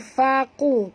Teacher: bukan faku tapi faqu, qu tebal